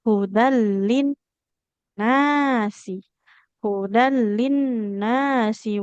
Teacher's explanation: di kata linnas yang panjang nun bukan sin